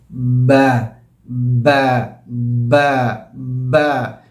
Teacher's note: ہونٹوں میں ایک قسم کی وائبریشن بھی ہوتی ہے با کہنے میں